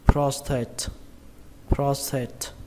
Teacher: Các bạn nhớ là trọng âm của nó rơi vào âm đầu tiên, âm pros, pros, xuống giọng âm tate